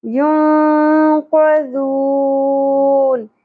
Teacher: ذال نرمے سے ادا ہوگا زا کی طرح نہیں پڑھنا · نون ساکن کے بعد حروف اخفا میں سے قاف آ گیا، اخفا مع الغنہ ہوگا